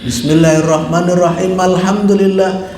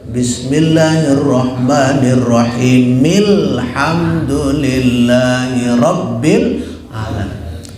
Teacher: Dia sambung tapi kaidahnya malhamdu, yang seharusnya milhamdu. Karena huruf terakhir harus dihidupkan.